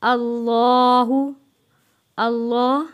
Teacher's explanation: ہم نے موٹا پڑھنا ہے، اللہ کا لام، کیونکہ اللہ کے لام سے پہلے زبر ہے